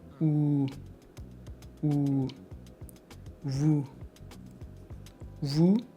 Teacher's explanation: Lips rounded, push lips forward. Small opening. Like you are about to whistle. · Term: deep OO sound